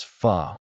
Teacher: The word fu is said as fu with a short neutral vowel like the start of fun, but with a soft aspirated f sound akin to a gentle exhale. The ph diraph misleads English speakers to think phone, but in Vietnamese, it's a breathy f.